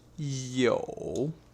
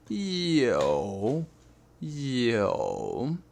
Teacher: the word in Chinese for have is yo third tone